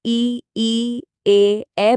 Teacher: दूसरा आधार है जीभ की स्थिति। जब हम इ ए बोलते हैं तो जीभ का अगला हिस्सा एक्टिव होता है। इसलिए ये अग्र स्वर हैं।